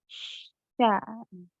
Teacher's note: kalau misalnya kita coba menyebutkannya dengan sempurna akan terdengar aliran nafas atau hamsnya.